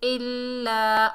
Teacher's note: لام مشدد ہے، مشدد حرف کو مضبوطی اور جماعت سے پڑھیں گے، 2 مرتبہ پڑھیں گے